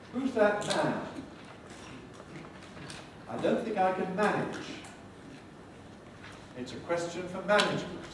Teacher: We squeeze up manage or management into the same kind of space that we allocate to man. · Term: rhythmic clipping